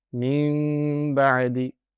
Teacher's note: the noon sakina will turn into a meme sakina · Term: Iqlab